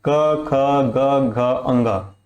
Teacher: तो उसकी जो आवाज है वो हमारे गले से आती है, मतलब हमारे कंठ से आती है, इसलिए इसे हम बोलते हैं कंठव्य लाइन।